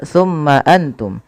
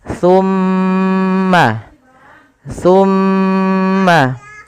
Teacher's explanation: ketika mim itu berharakat tasdid wajib ditahan suara ghunahnya ya tidak boleh langsung tumma Antum tapi tahan dulu suara mimnya